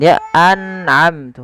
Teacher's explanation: Harusnya tidak boleh dipantulkan. Dia an'amtu, harus jelas. Harus jelas an'amtu. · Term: izhar halqi